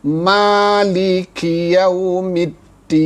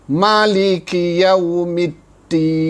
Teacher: Ma ni panjang 2 harakat. Walau bagaimanapun, ada juga qiraat yang lain membaca ma ini tidak dengan panjang, tidak dengan mad, hanya 1 harakat. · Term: mad asli